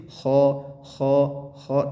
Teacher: Kemudian ada kho-nya ketebelan, jadi kho itu terlalu dalam. Harusnya tipis, kho tipis saja.